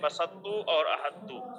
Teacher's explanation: اور اگر مدغم بالکل مدغم فی کی طرح نہ ہو جائے بلکہ اس کی کوئی صفت باقی رہے، یعنی مدغم کو مدغم فی کی جنس سے کیا جائے اور کوئی صفت باقی رہے تو اس کو ادغام ناقص کہتے ہیں، جیسے بسطو اور احدو کہ تا سے نہیں بدلتا اور اس میں صفت استعلاء باقی رہتی ہے